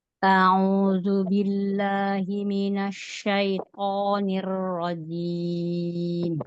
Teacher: Thnya jangan kepanjangan. Syaitan itu kepanjangan.